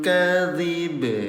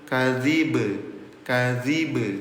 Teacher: Ba-nya disukunkan. Ketika ba-nya disukunkan terjadi hukum tajwid yang namanya qalqalah.